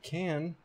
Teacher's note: we get to this surface form where the K is aspirated the a is a little bit nasalized and that and looks like an H so let's fix that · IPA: [kʰæ̃n]